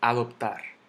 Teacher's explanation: yo digo adoptar que cae en la última sílaba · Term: golpe de voz